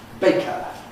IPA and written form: ˈbeɪ(clipped)kə (baker)